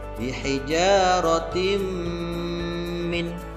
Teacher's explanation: Selanjutnya pada lafaz bihijaratim min, ini ada huruf tak di kasroh tanwin. Nah, kasroh tanwin bertemu dengan huruf mim, maka hukum bacaannya adalah idgham bi gunnah. Maka cara membacanya tanwinnya dimasukkan ke dalam lafaz huruf mim disertai dengan dengung.